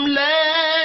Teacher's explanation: لا الف مدہ ہے ایک الف کے برابر کھینچ کر پڑھیں گے